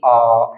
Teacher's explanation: एक ही स्वर है जिसमें पूरा मुंह खुलता है, यह है आपका आ